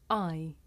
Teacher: this is a diphthong a double vowel sound the shape the mouth makes changes from the beginning of the sound to the end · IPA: /aɪ/